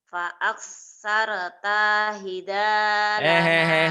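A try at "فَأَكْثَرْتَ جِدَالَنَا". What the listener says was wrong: Fa'aksarta jidalana bukan jihalana. Fa'aksarta jidalana. Fa'aksarta jidalana.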